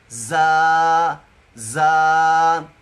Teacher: زا کی ادائیگی میں یہ سیٹی بھی ہے، سختی بھی ہے